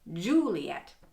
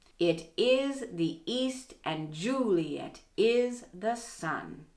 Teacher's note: this line also has an extra unstressed syllable in the fourth foot it's at the end of juliet